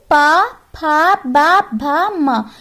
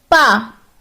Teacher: पा में देखो हमारे ओंठ जो होते हैं वो दोनों मिल जाते हैं आपस में, तो ये हमारा ओष्ठ हो गया।